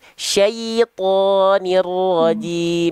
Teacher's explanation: Jadi bukan syaiton. Ya sukunnya di sana jangan sampai terkontaminasi ke huruf to dulu. Tuntaskan ya sukun dulu.